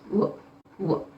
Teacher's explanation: when we are pronouncing W, there is no roll of teeth, only lips we are half rounding them up.